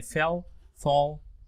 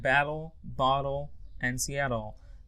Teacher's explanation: And dark L at the end, usually after a vowel sound